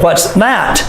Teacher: says with a question what's that voice goes up